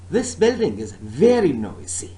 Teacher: stressing the word this nor building nor is and no noisy but my stress is on the word very